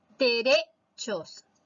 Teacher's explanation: La mayor fuerza de voz está en la sílaba re, es decir, en la penúltima. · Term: palabra grave